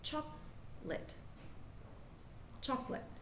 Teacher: We see that there are 4 vowels in chocolate, 2 O's, 1 A, and 1 E. But the fact is, the second O is completely silent. The A sounds like I, like in bit, and the E at the end is the common silent E.